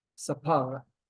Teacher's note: we have the emphasis on the pay, making it instead of an F sound, a P sound